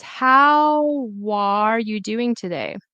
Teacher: the W and the A should be together